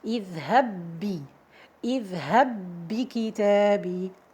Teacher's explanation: And in this case, we have to merge them together. So we have to merge the first ba into the second one to become one double ba.